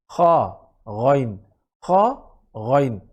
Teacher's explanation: আল্লাহতে যেই হা সেটা গলার শুরু থেকে, আর রহ এই হা হচ্ছে গলার মাঝখান থেকে, আইন গলার মাঝখান থেকে, আলামিন। আর শেষের মাখরাজ হচ্ছে গলার খা, গলা যেখানে শেষ, জিহ্বা যেখানে শুরু, সেই পয়েন্ট থেকে